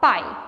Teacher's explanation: nesse caso o i não vai ser uma vogal ele vai ser uma semivogal porque ele está ao lado de uma vogal